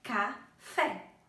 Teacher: Então, a gente já sabe que a sílaba tônica dela é a sílaba fé. Café. É a mais forte.